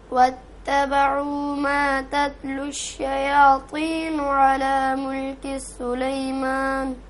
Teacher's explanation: واتبعوا ما واو کو نہیں کھینچیں، تبعو پیش کے بعد واو ہے تو اس کو کھینچیں، دو زبر کے برابر، دو پیش کے برابر کھینچیں گے